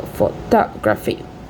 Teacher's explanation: The primary stress is on the second syllable,